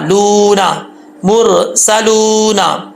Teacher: वाव मद्दा, या मद्दा और अलिफ मद्दा, खड़ा ज़बर खड़े ज़ेर उल्टा पेश, एक अलिफ की मिकदार खींचे जाते हैं ये सब चीज़ें, ठीक है। तो वाव मद्दा को एक अलिफ की मिकदार खींचेंगे · तो वाव मद्दा को एक अलिफ की मिकदार खींचेंगे, लू, नून ज़बरना, लूना, मुरसलूना।